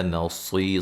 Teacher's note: صاد کو موٹا ادا کریں گے، را وقفاً الف مدہ میں تبدیل کر دیں گے، ملانے کی صورت میں نون تنوین کا کیا ہوگا، ادغام مع الغنہ ہوگا، ٹھیک ہے جی۔